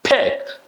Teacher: Next is also very beautiful word because there is a short e is involved in it and the first letter of course is unvoiced p sound on voice consonant sound and then the c sound happening right back of your throat